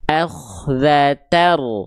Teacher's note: Karena bunyi an-nya udah masuk ke ro tuh. · Berarti ketika melafalkan idgham bila guna, bunyi n-nya dileburkan ke huruf antara lam dan ro, lalu nggak perlu didengungkan, nggak perlu sengau masuk ke hidung, dan nggak perlu ditahan